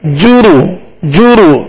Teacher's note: पेश को बगैर खींचे बगैर झटका दिए मारूफ पढ़ेंगे होठों को गोल करके